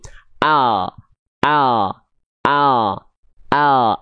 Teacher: ujung akhir lidah kita disentuhkan ke langit-langit bagian depan di atasnya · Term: l alfabet